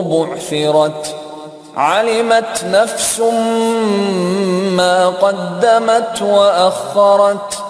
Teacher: جتنے تا تھے جو آیت کے ختم پہ آ رہے تھے انہوں نے وہاں پہ خاموش خلخلا کیا منہ کے اندر. یہ خلخلا 2 حرفوں پہ ہوتا ہے، تا پہ اور کیف پہ.